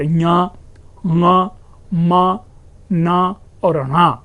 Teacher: अर्थात ञ, ङ, म, न और ण, जो जितने भी नेजलिंग साउंड हैं, हम उसका उच्चारण इसी नासिका से करते हैं। यानी अनुनासिक या नासिक की ध्वनियां जो है यह इसी नासिका विवर से उच्चारित होती है।